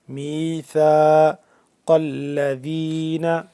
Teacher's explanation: وَإِذْ أَخَذَ اللَّهُ مِيثَاقَ الَّذِينَ تھا اس کا ہم نرمی سے پڑھیں گے، جیسے ذال ہے ویسے ہی زبان کی نوک کو ذرا باہر کی جانب نکال کر تھا کو نرمی سے پڑھیں گے